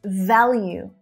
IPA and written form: ˈvæljuː (VALUE)